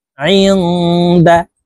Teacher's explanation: নুন সাকিনের পরে ইকফার হরফ দাল আসছে, এই কারণে এই নুন সাকিনকে গুন্নার সহিত নাকের ভিতরে লুকাইয়া পড়িতে হবে। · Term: ইকফা গুন্না